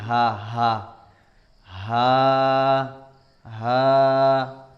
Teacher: دیکھیے ناظرین، اس سے پہلے ہا آیا تھا ایک لفظ، وہ حلق سے نکلتا ہے، ہا، اس کو ہم جو ہے بالکل سینے کے پاس سے نکالیں گے، جیسے کہ آواز نکلتی ہا ہا ہا ہا، حمزہ حمزہ، یا یا یا۔